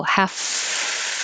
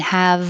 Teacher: the f and the v are made in the exact same place top teeth on bottom lip with airflow the only difference is voicing so half is voiceless no vibration and have is voiced and